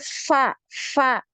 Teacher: biasanya kesalahan yang sering terjadi ya jadi Fa Fa ini eh bibir atas sama Bibir bawahnya bertemu Jadi bukan ujung gigi seri atasnya yang bertemu dengan perut bibir bagian bawah tapi bibir atas dan bibir bawah